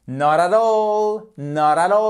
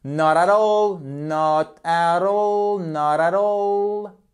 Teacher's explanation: je fais la prononciation tout d'un trait, comme si c'était un seul mot